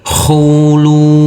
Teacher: Huruf lam kita baca panjang dengan panjang 2 harokat.